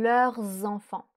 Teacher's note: On fait bien la liaison avec le S du leur